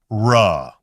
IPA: r